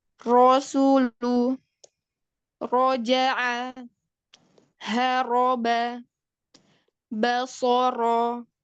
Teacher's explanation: makrotnya ada di ujung lidah dan sedikit punggung lidah yang bertemu dengan gusi atas